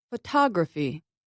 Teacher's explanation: we do not stress consonants for instance in the word photography I stressed the second vowel ah I said it louder and longer than the other vowels listen again photography the unstressed syllables are low fast and often